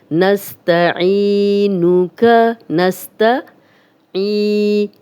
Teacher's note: یا مدہ جزم والی یا، عین پہ زیر، 2 حرکات لمبا کریں گے